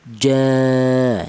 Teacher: dibaca mad thobi'i yaitu panjangnya yaitu dua ketukan